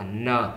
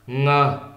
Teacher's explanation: Và hai âm này đọc thì hoàn toàn khác nhau, đó là N và ngờ. Đọc âm N thì chúng ta hơi cong lưỡi lên một chút, đó là N. Ngờ thì chúng ta sẽ đọc trong cổ họng